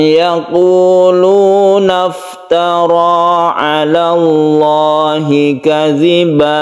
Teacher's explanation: yang disebut dengan mad Iwat Iwat artinya ganti am yaquulftarallahi kadiba satu Alif saja membacanya Jangan terlalu panjang · Apabila kita berhenti di sini, maka kita membacanya sebagai mad iwad. Iwad artinya ganti, tanwin fathah ini diganti menjadi mad, sehingga ini menjadi fathah dan dipanjangkan. Panjangnya satu alif.